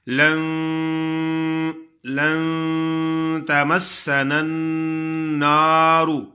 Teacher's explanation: نون ساکن ہے، اس پہ غنہ کرنا ہے اور اس کی آواز کو صاف نہیں پڑھنا. اس کی آواز ناک میں آئے